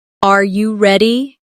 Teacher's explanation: pitch of their voice goes up at the end